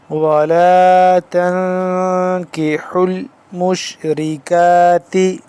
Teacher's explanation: تا نون زبر تن، اس پہ اخفا کریں گے، اخفا غنہ کریں گے، اور یعنی کہ غنہ کریں گے اس کو۔